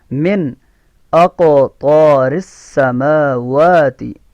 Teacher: قاف میں کلکلہ ہے، یہ موٹا قاف ہے. قطب جد میں سے قاف آ رہا ہے، قاف میں کلکلہ ہے.